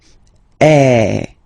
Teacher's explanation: have to produce is e so it's really open I mean the sound is really open and normally your mouth should be opened a little bit more than with the accent as well okay so it goes like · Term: accent grave